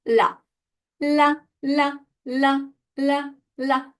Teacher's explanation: this is the tip of your tongue that is touching just behind your teeth for La La La